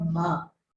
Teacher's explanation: In addition to the flow of air through your mouth, there's a flow of air through the nasal cavity as well, which is why it gets some sort of nasal quality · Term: nasal sounds